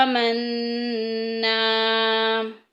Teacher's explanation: نون مشدد آ گیا ہے، غنہ کریں گے، غنے کا مطلب ناک میں آواز لے کے جانا، اور آگے نا میں الف اور پیچھے زبر آ گئی ہے، الف مدہ کا قاعدہ جاری ہو رہا ہے۔